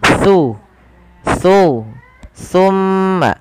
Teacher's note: huruf t ini tempat keluarnya adalah ujung lidah bertemu dengan gigi seri atas jadi ketika kita melafalkan t pertemukan antara lidah kita Jung lidah